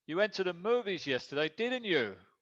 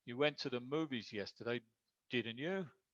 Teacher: If I wanted it to be a real question, I'd say, you went to the movies yesterday, didn't you? With rising intonation.